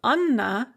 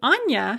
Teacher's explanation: the name anna has a hard n because it has an ah written after the n but the diminutive anya has a soft n because we have a yah written after the n as a